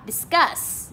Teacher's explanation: Discuss cũng lên giọng ở âm số 2 luôn